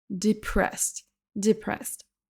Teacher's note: Écoutez bien la première syllabe, je prononce quasiment un I pour la première syllabe.